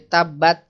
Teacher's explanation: ta itu ada sedikit angin tetapi tidak banyak